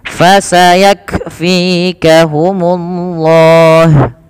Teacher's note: Yang kedua, dia punya sifat hamas, mengalirnya nafas. Maka ketika melafalkan kaf sukun, yaitu huruf kafnya yang pertama ditahan dulu nafas, ditahan dulu suaranya, baru alirkan nafas. Fasayak, bukan fasayak langsung, tapi tahan dulu nafas suaranya, baru lepaskan nafasnya.